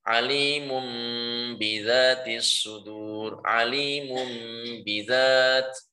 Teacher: Jika tanwin itu jatuh sebelum huruf ba, jadi tanwin dulu baru kemudian ba, maka ini sama diubah menjadi mim yang sukun disamarkan disertai dengan gunnah